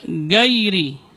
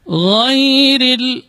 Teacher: gha keluarnya dari ujung tenggorokan. Adnal halq, dari ujung tenggorokan, dan dia bukan huruf tikrar. Dan tidak juga dibaca syiddah. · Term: rakhawah